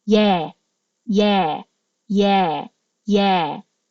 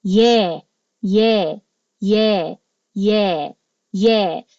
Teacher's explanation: Ang vowel po na to mas wide opening. Ibig sabihin na pababa yung jaw.